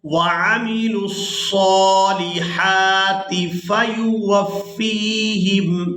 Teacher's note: वाव को फा मुशद्दद के साथ मिलाते हुए सख्ती के साथ अदा करेंगे।